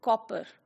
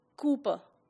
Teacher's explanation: So there are two different lengths, short one and the longer one, that are used as two different, vowel sounds.